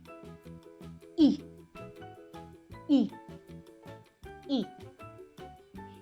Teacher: the front of the tongue lowers just a tiny bit from the long e position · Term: short e